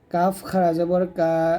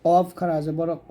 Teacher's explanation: গোড়া হতে একটু আগে বাড়াইয়া তার বরাবর উপরের তলার সঙ্গে লাগিয়ে কাফটা পাতলা করে উচ্চারণ করবেন আর কফটা মোটা করবেন